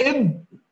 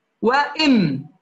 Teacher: انطباق الباء أشد انطباقا من الميم